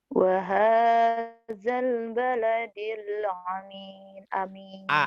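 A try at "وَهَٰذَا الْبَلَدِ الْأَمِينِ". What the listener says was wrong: Amin bukan ain ya. Wahadal baladil amin. Amin. Pak Amin. Amin biasa. Wahadal. Wahadal baladil amin.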